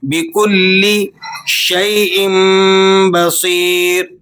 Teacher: بکل شیء بصیر، تنوین کے بعد لفظ با آ گیا، یہاں آپ اقلاب کریں گے، نون کی آواز کو میم سے چینج کر کے پڑھیں گے.